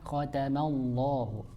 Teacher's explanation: jangan sampai mimnya terbawa tebal gitu